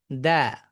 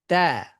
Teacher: জিহ্বার যে গোড়াটা আছে এটা নিচের দিকেই থাকবে, শুধুমাত্র অগ্রভাগটাই উপরে গিয়ে উপরের পাটির সামনের দুই দাঁতের গোড়ালিতে লাগবে, কিন্তু গোড়াটা নিচের দিকে থাকবে। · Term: লাইট সাউন্ড